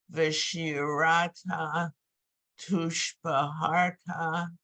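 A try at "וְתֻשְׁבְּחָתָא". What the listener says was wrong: Careful, there's no R in there. Tushbechata.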